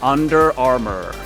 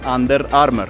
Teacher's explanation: Como que estás tragando la R. En Latinoamérica o en español, la R es mucho más en la boca.